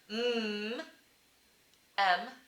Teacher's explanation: a bilabial nasal made with your two lips